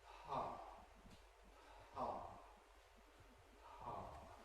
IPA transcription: pʰʰɑ